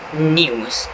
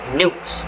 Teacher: It shows yod dropping in a simple way, where British English says news and American English says news.